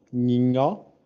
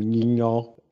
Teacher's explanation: Que significam coisas totalmente diferentes, e a única distinção entre as duas é o tom alto e o tom baixo